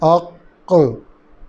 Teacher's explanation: دونوں حصے ملے جدا ہوئے اور قلقلہ ہو گیا.